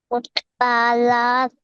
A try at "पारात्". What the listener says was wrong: ఉత్ లేదంక అక్కడ ఉత్ లేదు పారాత్ అంతే రాష్ట్రావార దాని తర్వాత పారాత్